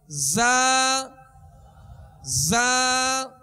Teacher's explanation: زا کو سیٹی کی آواز میں پڑھیں گے سختی سے